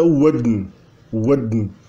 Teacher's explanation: Ele tem um D que desnasaliza um pouco o N.